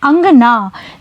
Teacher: जब आप अंगना बोलेंगे तो आप पाएंगे कि अनुस्वार की ध्वनि नाक से निकल रही है